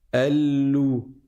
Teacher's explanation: on reste 2 fois plus de temps sur le lemme avant de passer à la voyelle qui est la dhamma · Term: shadda